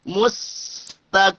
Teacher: Mustaqim, sambil dijalankan suara karena rokhawah.